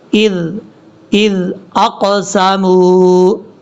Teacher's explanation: حمزہ کو زال کے ساتھ ملائیں گے اور زال نارمل طریقے سے پڑھا جائے گا، سیٹی نہیں آئے